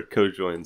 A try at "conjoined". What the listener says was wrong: Conjoined, not co-joined. No, there's an N.